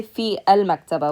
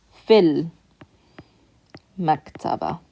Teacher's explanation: If it's a long vowel ya, it's going to shorten to a kasra sound. So it's going to sound like fi connected to that lam.